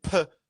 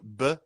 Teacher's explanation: So the P, they're both the same position for our lips. The only difference for everyone listening is that the P, I shoot out more air, versus the B, I use my voice more.